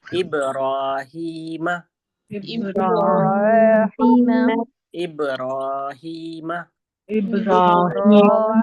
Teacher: बा की अदागी आराम से होगी र को हम मोटा पढ़ेंगे ह की जो अदायगी है वो सीने वाले हिस्से से होगी · र को इब्राहिम की र को हम मोटा पढ़ेंगे · را کو ہم موٹا پڑھیں گے. ہا کی جو ادائیگی ہے وہ سینے والے حصے سے ہوگی